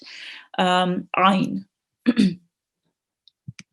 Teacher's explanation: Okay, so our next rule is the ayn, and it will be prolonged, it will be pronounced from the middle of your throat